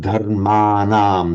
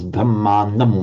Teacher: in Pali you can never have a long vowel before the anuswara, before that final M. So it automatically shortens.